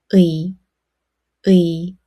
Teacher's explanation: Start with the sound ㅡ and quickly move to ㅣ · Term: compound vowel ㅢ